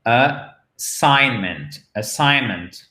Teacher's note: Donc, nous avons notre accent tonique sur la seconde syllabe.